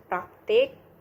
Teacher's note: gugus yang konsonan keduanya berupa konsonan getar R